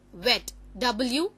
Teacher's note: Then we have this th, and you see the transcription just on the left how it is written, then we have the word wet, w, which is pronounced using the two lips, so it is w, different from v, and so it's written in the same way as we write the lowercase alphabets w.